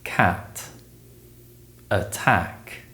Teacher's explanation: the a sound is produced with the tongue low and forward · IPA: /æ/, æ